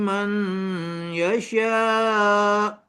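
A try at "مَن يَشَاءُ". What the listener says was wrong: Bukan ma. Mai. Masuk juga ya. Mai yasha.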